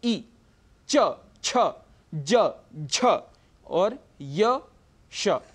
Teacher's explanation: जो हमारे दांतों के ऊपर का हिस्सा, अंदर की तरफ जो कर्व है, वहाँ पर टच करके हमारी जिह्वा, वहाँ पर स्पर्श होता है जिह्वा का, और इन वर्णों का उच्चारण होता है। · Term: तालु